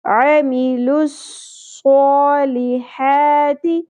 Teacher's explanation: صاد کو ہم نے ہیوی لیٹر بنانا ہے، پر کرنا ہے، موٹا کر کے پڑھنا ہے · ایک چیز کا خیال رکھنا ہے کہ صاد میں سیٹی ہوتی ہے. اکثر لوگ جب نئی نئی تجوید سیکھتے ہیں تو سا کی پریکٹس کرتے کرتے وہ صاد میں بھی سیٹی کا ایلیمنٹ ختم کر دیتے ہیں.